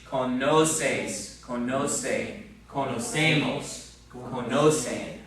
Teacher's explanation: So you got to get the accent in the right place, second to last syllable.